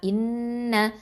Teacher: இன்ன இலைனா இயாபஹும், இது ஹம்சா கெஸ்ரா நூன் ஷத்தா, இன் நூன் ஃபத்ஹா, இன்ன இது அக்மல் குன்னா, முழுமையாக நம்ம குன்னா கொடுத்து ஓதணும்